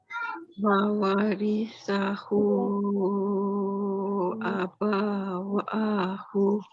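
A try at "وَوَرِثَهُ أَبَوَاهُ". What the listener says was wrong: Ba pendek, jangan panjang. Tu tadi kita baca 5. 4 boleh, 4 pun boleh. Sebab dia jumpa dengan hamzah. Kalau dia tak jumpa hamzah, baru kita baca pendek 2.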